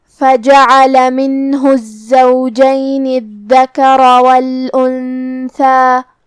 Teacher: دال کی ادائیگی زبان کے سر اور اوپر والے دانتوں کے اندرونی کناروں سے ہے، جو کہ حرف پہ تشدید ہے، تو ہم 2 حرف کے برابر حرف الدال کو پڑھیں گے. · کلمت الزوجین میں حرف الزائی ہے اور اس پہ تشدید ہے، لہذا 2 حرف کے برابر ہمیں حرف الزائی کو پڑھنا ہے